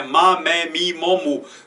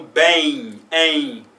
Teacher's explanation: Você vê que eu não, no final, eu não junto os lábios para pronunciar um M classicamente.